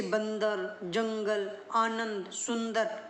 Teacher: अनुस्वार का उच्चारण नाक से होता है, जैसे बंदर, जंगल, आनंद, सुंदर आदि।